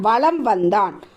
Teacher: மெய்யெழுத்துக்கான மாத்திரை என்னங்க அரை மாத்திரையிலிருந்து குறைந்து கால் மாத்திரையாக ஒலிக்கும் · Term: மகர குறுக்கம்